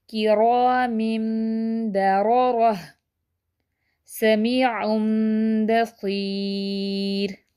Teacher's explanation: تو ہم نے رول پڑھا ہے کہ 3 ٹائمز ہولڈ یعنی کہ غنہ کریں گے اور پھر اس کو ٹرن اوور اقلاب، اس کو ٹرن کر دیں گے، یعنی کہ نون کی آواز کو، نون ساکن کی آواز کو میم میں بدل دیں گے